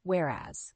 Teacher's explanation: the word whereas has two syllables with the stress on the second syllable